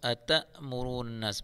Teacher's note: أَتَأْمُرُونَ النَّاسَ، تا کے بعد حمزہ آ رہا ہے، اس کو أَتَأْمُرُونَ النَّاسَ میں نناس نون مشدد گنہ کے ساتھ پڑھیں گے